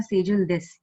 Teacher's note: So it is an assertive sentence. It goes in a plain form. It is flat. So like this, they have given that it is a flat intonation.